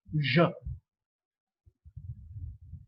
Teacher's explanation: Then the manner of articulation, the place of articulation is post-alveolar. So the tip of the tongue touches the back of the alveolar, almost near the hard palate region. We get this sound j, and it is also a fricative, meaning there is a stricture of close approximation, or there is a narrowing, and when air passes through that gap, there is a lot of friction.